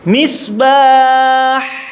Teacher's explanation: Ketika hak disukun maka harus betul-betul nampak ya, udaranya keluar dan suaranya juga tetap ya, tetap ada.